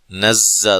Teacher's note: ذلك بأن الله نزل الكتاب بالحق، ذال کو نرم ادا کرنا ہے، مد اصلی ہے، کاف کو باریک، لام کو باریک، بأن اللہ، نون مشدد پہ غنہ ضروری، لفظ اللہ کو موٹا ادا کرنا ہے، اس سے پہلے حرف پر زبر ہے۔ نزّا، زا کو زور سے سختی سے سیٹی کے ساتھ ادا کرنا ہے